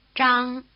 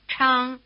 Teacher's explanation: they stand for consonant sounds with a strong R flavor, one unaspirated and one strongly aspirated